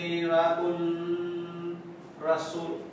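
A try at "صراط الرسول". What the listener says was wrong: Shamsiyah to. So, alisin mo yun lang. Shadda mo na yung ra. Alisin mo na yung lam. Siratur. Siratur. So, siratu. After nito, tatalo na mo na si Hamzatul Wasal. Tatalo na mo na rin sila. Tatalo na mo na rin sila dahil sun letter yung sumunod sa kanya. So, from Tamagupa, didiretso na kay Ra. Siratur, then Ra ulit. Rasuli.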